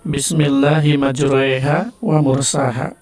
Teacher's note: Kemudian imalah yang miring ke e ya.